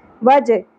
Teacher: ہا کی ادائیگی میں اس چیز کا خیال رکھنا ہے کہ اقصی حلق سے کیونکہ ادا ہوگا تو سانس کی آواز نہ آئے، ہا کی آواز نہیں آنی چاہیے.